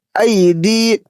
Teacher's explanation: ای دی، ای کو جلدی پڑھیں گے کیونکہ حروف لین ہے، یا ساکن سے پہلے زبر ہے اس لیے اس کو نرم آواز سے جلدی پڑھیں گے۔ · دال یا زیر دی کو تھوڑا کھینچ کر پڑھیں گے کیونکہ یہاں یا مدہ کا قاعدہ بن رہا ہے ، یا ساکن سے پہلے زیر ہے۔ ہا میم زیر ہم،